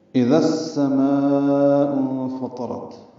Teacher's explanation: حمزہ اقصی حلق سے ادا کریں گے، ای معروف طریقے سے پڑھیں گے. · ذال کو السماء کی سین سے ملا دیں گے، ادغام شمسی ہوگا